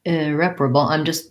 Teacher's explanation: Lots of R's in here. We have second syllable stress.